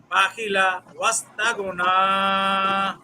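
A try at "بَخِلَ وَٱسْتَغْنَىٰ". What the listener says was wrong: জি মাশাআল্লাহ সুন্দর হয়েছে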